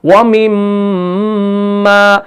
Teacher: जब हमने मीम को पढ़ा ना तो हमने दोनों होंठों को मिलाए रखा, हमने होंठों को खोल कर नहीं रखा। यानी हमने जहां पर मीम का जो मखरज है वो जब दो होंठ आपस में मिलते हैं तब जाके मीम अदा होता है। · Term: गुन्नाए ज़मानी